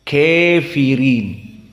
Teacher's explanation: Maka Hafs an Asim dengan fathah membaca, dan yang lainnya dibaca dengan al-imalah al-kubra, kafirin.